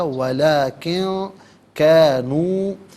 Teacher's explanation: ہے، اس کے بعد قاف حرف اخفا آ رہا ہے تو نون ساکن کو اخفا کے ساتھ پڑھیں گے، یعنی ناک میں آواز لے جا کر گنگنانا، اسے اخفا کہتے ہیں